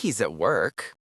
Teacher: The H drops in he's if it's fast and at becomes at.